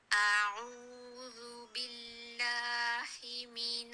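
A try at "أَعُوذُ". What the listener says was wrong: اعوذ, اسے آپ نے شروع نہیں کرنا, سب سے پہلے ہمارے پاس مد نہیں ہے, آپ مد کا اظہار کر رہی ہیں. اعوذ نہیں, اعوذ اعوذ.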